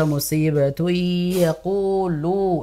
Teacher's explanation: Ku panjang, lu juga panjang. Ya, ku panjang, lu juga panjang.